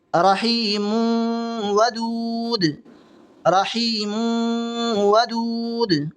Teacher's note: आगे वाली मिसाल देखें, रहीमुन वदूद, रहीमुन वदूद, गुन्ना करेंगे क्योंकि इदगाम माल गुन्ना है, मिला करके गुन्ना के साथ पढ़ेंगे।